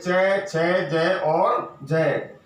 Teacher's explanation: इनमें स्पर्श का समय ज्यादा होता है और अंत में थोड़ा सा संघर्ष होता है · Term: स्पर्श संघर्षी व्यंजन